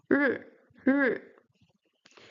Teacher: The R sound in Chinese is retroflex, so you have to curve your tongue backwards when you pronounce it.